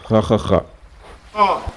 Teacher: It's the number 5 if you remember from the video, the new sounds in Arabic. A little vibration from the roof of the mouth.